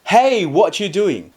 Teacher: It starts high and falls strongly and quickly. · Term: fourth tone